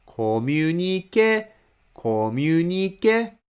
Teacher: For example, when I say a word communication, stress is on ke. So from the beginning toward the ke, you read it with rising tone.